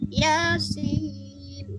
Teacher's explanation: Ya-nya 2 harokat doang ya, maka dibaca Yasin langsung gitu.